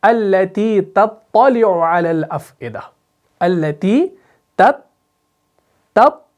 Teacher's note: پہلے تا کو باریک پھر تا کو آپ نے موٹا کر کے ادا کرنا ہے